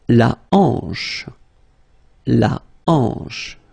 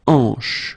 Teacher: La hanche. Remember, H here is not pronounced, so you get the sound en, hanche at the beginning